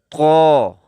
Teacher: آواز بھی موٹی ہوگی اور زبان کا کنارہ اوپر کے 2 دانتوں کے جڑ والے حصے کو لگے گی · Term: طا